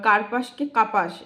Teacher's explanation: শব্দের মধ্যে অবস্থিত ব্যঞ্জনধ্বনি লুপ্ত হওয়ার প্রক্রিয়াকে বলে মধ্য ব্যঞ্জন লোপ